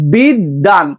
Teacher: এখানে দটা ডাবল উচ্চারণ হচ্ছে, তোমার বয়ের কিন্তু উচ্চারণ হচ্ছে না। এটাই বোঝানো হয়েছে যে মধ্যে বা শেষে বফলা যুক্ত থাকলে যুক্ত ব্যঞ্জনের দ্বিত্ব হয়।